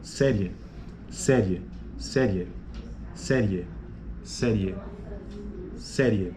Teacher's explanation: ó série veja que a vogal e que fica mais forte Então você tem uma semivogal e uma vogal e é crescente